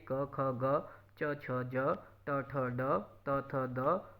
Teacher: ਉਚਾਰਨ ਵੇਲੇ ਸਾਹ ਦੀ ਹਵਾ ਨੂੰ ਪੂਰੀ ਤਰ੍ਹਾਂ ਰੋਕ ਪਾ ਕੇ ਫਿਰ ਛੱਡਿਆ ਜਾਂਦਾ ਹੈ ਇਸ ਕਰਕੇ ਇਹਨਾਂ ਨੂੰ ਡਕਮੀਆਂ ਵਿਅੰਜਨ ਧੁਨੀਆਂ ਕਿਹਾ ਜਾਂਦਾ ਹੈ ਜੀ। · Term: ਡਕਵੀਆਂ ਵਿਅੰਜਨ ਧੁਨੀਆਂ